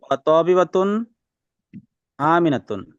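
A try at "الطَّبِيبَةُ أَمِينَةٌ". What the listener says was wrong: আলিফ লাম আছে, আপনি কেন তানবিন দিচ্ছেন একটু খেয়াল করে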